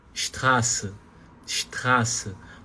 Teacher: Então, quando você pronunciar a palavra Straße, essa letra A aqui, ela é um pouco, você vai prolongar um pouquinho esse A aqui. Você não pode falar de forma muito curta. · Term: vogal longa